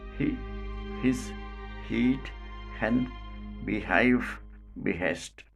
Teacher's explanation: this is called a glottal voiceless fricative the sound has no voice to counterpart like the previous voiceless · But here this ha is a lone fricative without voiced counterpart. Place of articulation, glottis. Manner of articulation, fricative. Quality, voiceless. This is called a glottal voiceless fricative. The sound has no voiced counterpart like the previous voiceless fricatives.